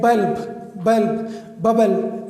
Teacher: It is pronounced from both of the lips. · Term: bilabial sound